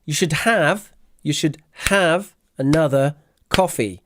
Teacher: the stress here is on have another coffee